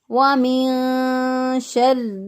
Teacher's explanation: اور نہ ہی با ہو تو اس وقت اخفا کرتے ہیں، نون ساکن کی آواز کو پوشیدہ رکھتے ہوئے ادا کریں گے ، اور را کے اوپر چونکہ شد ہے